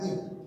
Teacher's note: এবার তুমি যদি এই ই উচ্চারণ করবার সময় দেখো ই জিভটা কি হচ্ছে, হালকা উপর দিকে যাচ্ছে, ই হালকা কিন্তু উপরে উঠে ঢেউ খেয়ে গেছে